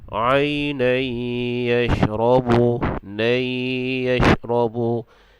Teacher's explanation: Situ dia ada hukum idgham ma'al gunnah. Jadi kita baca dia dengan dengung.